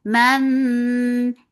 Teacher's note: idgham with gunna, so keep the sound in your nose for a longer time.